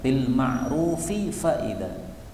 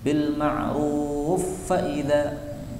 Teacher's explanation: Kemudian pada ayat berikutnya, ayat yang ke-6, ini ada bacaan idgham, bil ma'rufi faida. Fi fa, ya, fa ketemu fa, maka boleh idgham